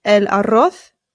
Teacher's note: Remember that the double R in Spanish is rolled, so rrr. And the Z in Spain Spanish makes the TH sound